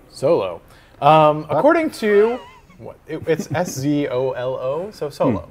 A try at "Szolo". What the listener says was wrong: Zolo. The S is silent.